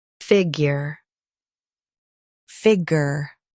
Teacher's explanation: Stress fig. Keep ure soft.